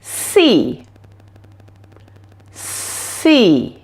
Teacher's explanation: And you should be able to see the sides of my tongue coming through between my upper and lower teeth. For the S sound, there is no voice coming from your vocal cords, only air passing through your mouth. You will notice that the air flows down the middle of your tongue, and your tongue is shaped a little bit like this.